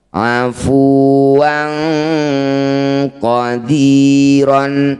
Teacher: Bunyi tanwinnya langsung kita ganti jadi e. Dengungkan dua harakat. · Kana afuwan fathah tanwin bertemu qaf disebut bacaan namanya ikhfa ab'ad. Bunyi tanwinnya langsung kita ganti jadi dengungkan 2 harokat.